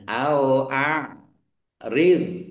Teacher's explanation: dok dok sukun jangan dipantulkan ya, bukan kol-kola